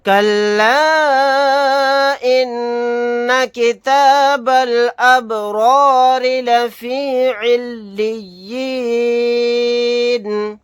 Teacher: را کے اوپر زبر ہے، را کو موٹا یعنی پر پڑھیں گے، را کے نیچے زیر ہے، یہاں پر اس را کو باریک پڑھیں گے، نون کو ساکن بنا کر پڑھیں گے آیت کرنے کی صورت میں۔